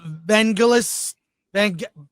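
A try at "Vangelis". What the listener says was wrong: It's not gel, it's gal. It's a hard G.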